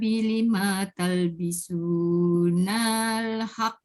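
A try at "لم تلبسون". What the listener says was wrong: 5 pendek. 5 talbisu. Pendek. Dia setiap hujung kalimah yang kita nak pindahkan pada kalimah sebelah. Tengok alif waw ya kalau tak ada jangan panjangkan suara.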